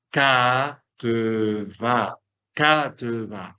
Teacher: Haciendo obviamente el acento en la última sílaba.